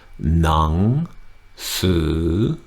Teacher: Both halves of that word are rising. Nung su. Can you hear that I'm tightening my throat up right here at the base of my tongue, right at the tonsils when I do the second half of that word?